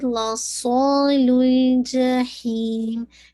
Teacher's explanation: لا صاد پہ آپ نے ہیوی کرنا اور ساتھ میں آپ کی اس میں ویسلنگ ساؤنڈ بھی ہے. لا صال الجحیم، جا جا جہیم، نوٹ جا یہ ساؤنڈ نہیں، روکیں گے مد العارض للسکون.